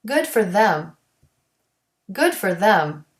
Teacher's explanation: You can't delete the TH here because the word is stressed in the sentence.